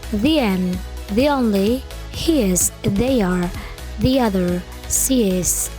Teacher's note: ketika ada bunyi I plus vowel, maka di tengah-tengahnya seolah-olah ada huruf Y-nya